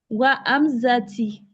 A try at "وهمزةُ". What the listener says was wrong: No, it's not Wahamzati. If you say Wahamzati, it means you are swearing by Hamza. You say, I swear by Hamza. That's the meaning. Wahamzatu. Wahamzatu.